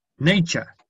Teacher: Y americano le metemos una R real.